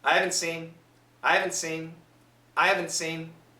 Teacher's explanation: for a simple word for a common word like haven't seen almost always the H and the T will be cancelled 50% at least so I haven't seen sounds like I haven't · almost always the H and the T will be canceled